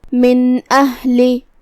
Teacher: یہاں حکم ہے اظہار، الف حروف الاظہار میں سے ہے جو کہ اظہار کا معنی ہے ظاہر کرنا، تو ہم یہاں نون ساکن کو ظاہر کریں گے اور بغیر غنہ کے حکم کو ادا کریں گے